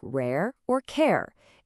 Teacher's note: It's another one of those gliding sounds. It starts as one vowel and then kind of relaxes into another.